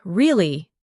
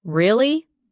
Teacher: when you ask a question like, Really? your voice goes up slightly at the end. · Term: rising tone